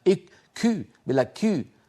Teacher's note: إخواننا بتركيا يبالغون في الهمس · إخواننا الأتراك إن كم، شايفين هذا النفس المتدفق زائد عن اللزوم بالنسبة للكاف العربية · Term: الهواء المتدفق الزائد عن اللزوم